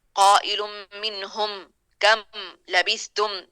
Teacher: یہ میم ساکن ہے، تو ان میں ہلکا ٹچ ناک میں جائے گا